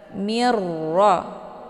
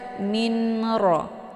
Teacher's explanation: nunnya dimasukkan ke dalam huruf ro dengan cara ditekan dan masuknya adalah Kamil mirro Jangan dibaca minro itu bacaan yang · masuknya adalah Kamil mirro Jangan dibaca minro itu bacaan yang salah hukum bacaan Idgham bilaghunah tiada berdengung